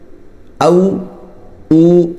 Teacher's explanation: है वाव इस तरह ना निकाले जिस तरह फा निकलती है ऊपर के दांत नीचे के होठ को लगाए बल्कि दोनों होठों से वाव निकालना है